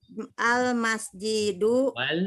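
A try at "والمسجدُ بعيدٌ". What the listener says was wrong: masjidu. Itu ada wa-nya Bu. Jadi sengaja wa-nya digundulin tuh. Wal masjidu.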